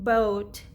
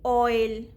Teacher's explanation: In them, the sound is gliding from one vowel to the other vowels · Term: Diphthongs